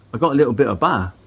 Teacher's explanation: the word little becomes little with the t completely replaced by a catch in the throat · the t in little is replaced by a glottal stop, making the speech sound more casual.